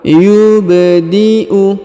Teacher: huruf ba berharakat sukun maka kita baca pantul yubdiu wauid huruf i dipanjangkan boleh dua boleh empat boleh enam